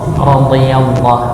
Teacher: tepi lidah bertemu dengan geraham bagian atas, radhi bukan dimonyongkan ya, tapi ditemukan antara tepi lidah dengan geraham atas, bagian kanan atau kiri monggo ya, atau dua-duanya juga boleh kalau lidahnya lebar begitu ya. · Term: huruf dha